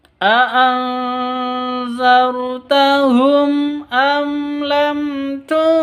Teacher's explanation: Mim mati bertemu dengan hamzah, bacanya jelas, tidak boleh didengungkan karena bacaan izhar safawi. Mim mati bertemu dengan lam juga harus jelas bacanya, terang, tidak boleh didengungkan karena izhar safawi.